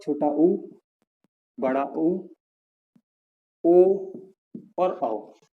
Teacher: इन चारों को ही बोलने पर हम लोगों के ओठों की आकृति कैसे हो जाती है, बिल्कुल से वृत्त में हो जाती है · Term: वृत्ताकार